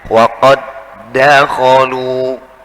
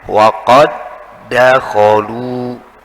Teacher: Ini karena ini diidghamkan, digabungkan, ya, memasukkan dal yang awal yang sukun masuk ke dalam huruf dal di depannya yang hidup sehingga akan menjadi seperti huruf itu bertasydid meskipun dal merupakan huruf qalqalah.